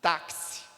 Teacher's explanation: São dois sons que estão saindo. Táxi, que é o som K e o som S, KS. Então, percebe que esta letra X, nesta palavra, vai representar dois sons.